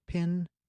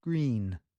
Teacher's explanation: Look in a mirror, she says, while you say the words pin and green. Because to say I, your face is very relaxed, but to say E, you are pulling the sides of your mouth almost like you're smiling. It's a bigger mouth movement.